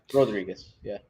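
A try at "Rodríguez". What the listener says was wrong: Rodriguez. No silent R. They use that R.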